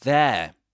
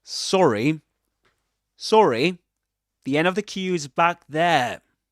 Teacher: he doesn't pronounce the final r at the end of there. He doesn't say there, but there.